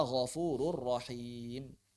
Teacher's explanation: memasukkan huruf nun dan tanwin ke dalam huruf lam ataupun ra tanpa diiringi dengan bacaan yang gunnah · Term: idgham bila gunnah